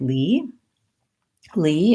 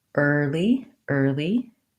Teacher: e is tense and er is tight and back